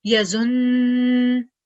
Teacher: But if we were stopping, because there is no dhamma at the end, we will stop as yazun. We will carry on the shadda sound for 2 seconds, but because there is no dhamma at the end, we will not produce the nu sound.